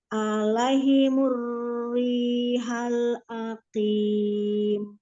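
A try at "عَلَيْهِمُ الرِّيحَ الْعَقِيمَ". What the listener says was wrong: Ini bacanya alaimur. Alaihimur. Hinya kurang jelas. Haknya.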